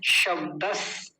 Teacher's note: पहला वाला तालव्य सकार है, दूसरा वाला दंतीय सकार है